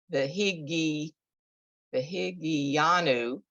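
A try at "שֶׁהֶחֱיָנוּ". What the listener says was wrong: That's an ayin. Anu. The higi anu, right? Because it's the ayin. So you hear just the ah.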